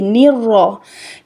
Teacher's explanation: دیکھیں جب ہم شد کو ادا کریں گے سختی سے کریں گے، را کو پر پڑھیں گے، را پر ادا ہوگی، موٹی ادا ہوگی، منہ بھر کر ادا کی جائے گی. را، لیکن اس کو موٹا کرتے کرتے 2-3 را ادا نہیں کرنی.